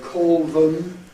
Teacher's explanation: still dark L because it's followed by consonant